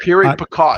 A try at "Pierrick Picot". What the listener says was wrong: Pierrick Picot. You don't say the T.